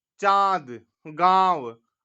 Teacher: अनुनासिक का उच्चारण नाक और गले के द्वारा किया जाता है